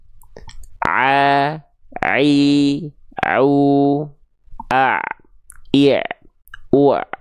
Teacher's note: ketika kita melafalkan huruf Ain katup epiglotis inilah yang akan berkontraksi